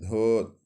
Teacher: दंत्य वर्तस्य महाप्राण घोष व्यंजन वर्ण का उदाहरण है